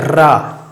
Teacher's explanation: क्योंकि जब हम रा बोलते हैं, एक बार बोलिए रा, ऐसा लगता है जुबान एकदम घर्रा सी गई है, ऐसा लगता है आपकी जुबान बहुत ऊपर नीचे वाइब्रेट हो रही है, एकदम से वाइब्रेशन आ गया है आपकी जुबान में, बहुत ज्यादा कंपन कर रही है। प्रकंपित का आपका मतलब है कंपन करना, आपकी जीभ बहुत ही ज्यादा कंपन कर रही है। जैसे छोटे में बच्चे कहते थे हुर्र, ऐसे गाड़ी चलाया करते थे, तो वही आपका है।